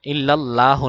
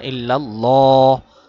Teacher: ল এক আলিফ টান আর মোটা করে